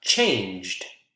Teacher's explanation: is it voiced oh yeah that's definitely voiced so we're going to have a d pronunciation for ed